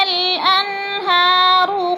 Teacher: اور الان میں اظہار ہو رہا ہے، ادھر غنہ نہیں کریں گے